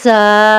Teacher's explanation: وہی سٹی والی آواز ہوگی لیکن گلے میں ہلکی سی کیمپن بھی ہوگی، تھوڑی سی وائبریشن بھی محسوس ہوگی